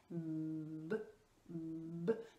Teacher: Et ensuite, pour le son b, vous voyez que je ferme aussi les lèvres, hein, je les serre. Et là, l'explosion, elle est moins importante. Et on a une vibration. · Donc ce qu'on va faire, c'est qu'on va faire exprès d'allonger le son avec l'enfant pour qu'il sente bien la vibration. Ce sont deux lettres qui sont bilabiales, on dit, puisqu'elles sont prononcées avec les deux lèvres. Eh bien, on va ressentir la vibration au niveau des lèvres et on peut ressentir aussi la vibration un petit peu au niveau des incisives supérieures.